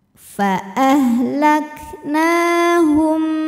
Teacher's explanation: Jawabannya adalah ikhfa syafawi, karena ada mim sukun menghadapi huruf ba. Cara bacanya, mim sukun dibaca berdengung.